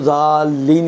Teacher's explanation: اگر آپ نہیں کھینچیں گے تو یہ الف پڑھنے میں نہیں آئے گا، ساکت ہو جائے گا، مثلا آپ کھینچیں گے نہیں تو ذالین کی بجائے ذلین بن جائے گا مثلا، ٹھیک ہے نا؟